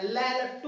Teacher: पार्श्व क्यों दिया गया, नुका ल को बोलते समय, लट्टू को बोलते समय हवा जीभ के साइड होता है, अर्थात पार्श्व भाग से निकलती है, इसलिए इसका नाम दे दिया पार्श्व व्यंजन। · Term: पार्श्व वर्ण